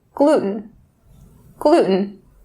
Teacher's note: for North American English, just make sure to drop or stop that T sound